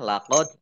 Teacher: dalnya dal sukun, bacaan qalqalah, dibaca memantul, ditampakkan pantulannya